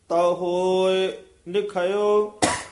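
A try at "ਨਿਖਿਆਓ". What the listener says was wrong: निखयो नी निखयाओ। नन्ने दे विच dash देके ना निखयाओ, पाठ कठा ही है।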